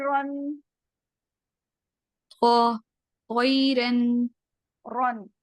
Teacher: र प जब भी जबर या पेश आएगा चाहे डबल हो चाहे सिंगल हो तो उसको हमने हैवी मोटा करके पढ़ना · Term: र हैवी